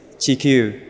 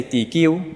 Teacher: although in Chinese it's a ch, chi, in the past it was a t, so tikyu